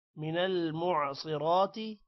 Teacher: صاد موٹا ہوگا را بھی موٹا کریں گے را پر کھڑی زبر ہے تھوڑا سا لمبا بھی کریں گے تی کو لمبا نہیں کرنا ماء میم کے بعد الف ہے